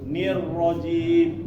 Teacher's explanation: jadi getarannya sedikit aja satu atau sampai dua getaran